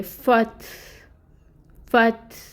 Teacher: फ़ा को हमने ता के साथ मिलाना है क्योंकि ता साकिन है। फ़ा की हरकत 1 है, 1 काउंट होगी और फिर इसको ता के साथ हम मिला देंगे, फ़त, फ़त।